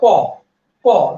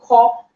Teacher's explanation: খ উচ্চারণ করার সময় আপনার ফুসফুস থাকবে, বাতাস এসে আপনার হাতের তালুতে আঘাত প্রাপ্ত হবে। তার মানে যেটাতেই বাতাস লাগবে তা হচ্ছে মহাপ্রাণ, আর যেখানে বাতাস লাগবে না তা হচ্ছে অল্প প্রাণ।